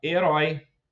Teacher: Em herói, é o ditongo aberto OI, que também está na última sílaba.